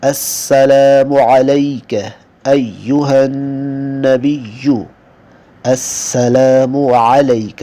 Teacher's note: عین کو گلے سے نکالیں گے وسط حلق سے